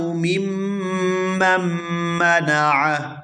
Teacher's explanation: یہاں میم کو میم مشدد کے ساتھ ملائیں گے اور پھر دوسری میم مشدد کو اس سے آگے والی میم مشدد کے ساتھ ملائیں گے. درمیان میں جو نون ہے یہ سائلنٹ ہو جائے گا. میم میم زیر میم، میم میم زبر مم، میم مم، میم زبر م، میم مم، میم مم منع.